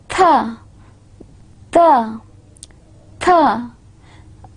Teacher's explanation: We are inserting our tip of tongue in between the two sets of teeth, two lines of teeth, and then we are saying these two sounds. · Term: Interdentals